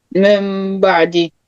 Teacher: if you have nun sakin followed by ba, you have to change nun sakin to mim